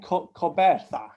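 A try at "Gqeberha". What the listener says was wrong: Oh, you got to get the click.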